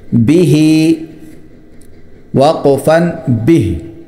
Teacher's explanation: با کو مختصر کریں گے اور ہی کو کھینچیں گے